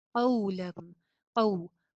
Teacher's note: قاف موٹا اور واو پہ ہونٹ گول